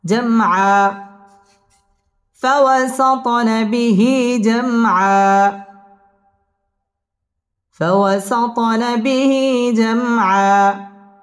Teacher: জাম মিম সাকিনে ইজহারে খাস গুন্না ছাড়া পড়তে হবে